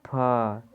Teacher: फ का उच्चारण स्थान हम लोगों का ओष्ठ से होता है। जैसे फ, दोनों ओठ आपस में सट रहे हैं।